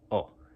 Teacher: o is like goat uh but without like the W at the end so when you say goat in English it's kind of like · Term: Spanish O